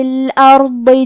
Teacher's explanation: کلمت الارض میں یہاں حرف الضاد ہے، اور ضاد کی ادائیگی زبان کے کروٹ اور اوپر کے داڑھوں کے جڑ سے ہے۔ کیونکہ ضاد حروف تفخیم میں سے ہے تو ہم یہ حرف کو بھاری آواز میں اور منہ پھلا کے پڑھیں گے